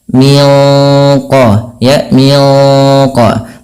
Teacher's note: Kita bacanya nunnya disamarkan langsung ke huruf qaf yang dia menebal. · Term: ikhfa hakiki